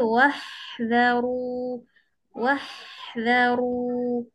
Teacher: huruf ha cantik. Sebab apa? Sebab dia tarik dengan lembut. Tak ada potong tengah-tengah.